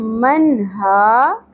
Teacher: नून की आवाज़ को ज़ाहिर करके पढ़ना है, हरूफ हलक़ी में से ह आ गया हमारे पास। من ہا کھڑی زبر کو ایک الف کے برابر کھینچیں گے.